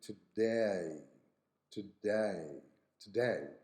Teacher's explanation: and British English but in Australian English you say today today put in an extra a sound at the beginning of the diphthong